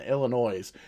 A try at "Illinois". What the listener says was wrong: Did you just say Illinois? Did you actually pronounce the S at the end of Illinois?